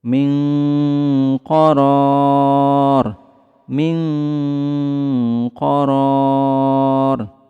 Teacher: Khusus huruf qaf dan kaf, suara samarnya lebih ke huruf ang.